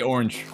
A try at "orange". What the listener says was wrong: Did you say with a CH? Why are you doing that in the end? It's just orange.